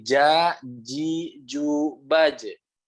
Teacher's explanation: Nah, jadi yang harus diperhatikan di huruf jim harus benar-benar nempel. Karena kalau nggak nempel, dia nanti ada yang lepas. Yang lepasnya adalah udara. Ketika ada udara yang keluar, maka salah.